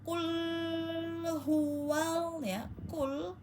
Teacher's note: pastikan qul ada pada pangkal lidah paling dalam ya. Jadi dia lunak terus benar-benar yang dalam ya karena beda ee tempat dengan kaf ya.